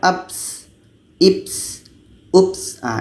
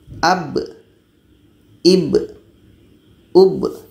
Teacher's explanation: Ketika ba mati menjadi kolkolah. Jadi tidak ada angin di sini.